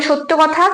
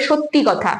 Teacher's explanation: যখন সত্য বলছি তখন কিন্তু শেষে কোন স্বর ধ্বনির আগমন হয়নি যখন ধ্বনিটা পরিবর্তন হয়ে সত্যি হয়েছে তখন লাস্টে একটা ই স্বর ধ্বনি আসছে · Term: অন্ত সরাগম